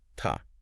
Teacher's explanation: You hear how vowels often get reduced in unstressed words like to often sounds like ta or for sounds like fair.